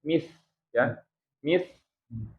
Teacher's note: dengan ujung gigii bagian atas ya bacanya mis ya Mis jadi dia punya sifat hams ya HAM jadi udara keluar